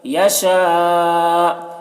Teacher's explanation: ہیں، اس کو ادغام ناقص کہتے ہیں، میں اس طرح، یشاء، یہاں پر حرف مد کے بعد حمزہ اسی کلمہ میں ہے تو مد متصل ہوگا